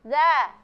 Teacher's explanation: Jadi huruf za ya. Huruf za, tempat keluarnya huruf za itu di ujung lidah. Tempat landasannya adalah gigi seri atas.